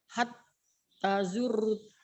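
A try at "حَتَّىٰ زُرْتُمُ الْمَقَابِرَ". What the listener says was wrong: Hatta tanya panjang Ibu.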